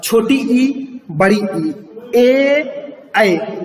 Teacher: जब हम छोटी ई बोलते हैं तो जीभ का अगला हिस्सा ज्यादा सक्रिय होता है।